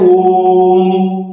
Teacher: जैसे साउंड करेंगे ओम। तो म को हम ज्यादा समय तक काउंट करते हैं